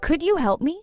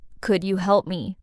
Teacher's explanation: Rising versus could you help me falling. The first one is a friendly request. The second sounds a bit flat or impatient. · your voice should rise at the end. It sounds more polite and less like a demand.